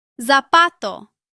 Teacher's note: In most of Latin America, Z sounds similar to S.